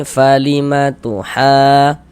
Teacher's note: Panjangnya mad lazim kilmi mutsaqqal atau kalimi mutsaqqal itu dipanjangkan dengan panjang 6 harokat.